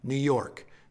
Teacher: New York, that's an iamb. First syllable unstressed, second syllable stressed.